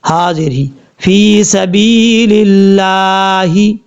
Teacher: اب لام کے اوپر کھڑا زبر ہے، ایک الف کی مقدار اس کو بھی لمبا کر کے پڑھا جائے گا